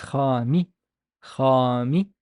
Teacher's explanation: It has an alif after it, so it's a long ah sound. So and the meme has kasra, so it's khami, khami, and the sin has dhamma, so it's khamisu, khamisu.